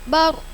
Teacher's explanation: ro sukun didahului fathah tebal bacanya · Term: tafim